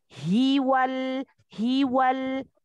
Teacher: Keluarkan pada makhrajnya, yaitu pada tenggorokan bagian bawah. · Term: huruf H